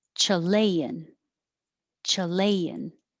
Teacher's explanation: the vowel is ah so you have to open